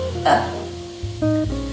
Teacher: called a lazy sound and the sound is pronounced as uh when you pronounce this word uh you don't have any lip movement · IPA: /ə/